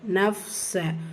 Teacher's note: ஃபா சுக்குன் பிடிச்சு வந்திருக்கு ஹம்ஸ் உடைய சட்டம் காற்றை வெளிப்படுத்தி உச்சரிக்கணும்